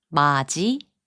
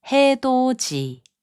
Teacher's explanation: the final consonant 디귿 and 이 are combined to make a 지 sound